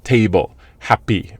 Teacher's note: One thing I do recommend to remember is if you have a 2-syllable nouns and adjectives, I would say 80 to 90% of the stress is on the first syllable